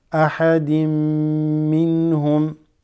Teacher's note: it just assimilates straight into the meme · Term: assimilation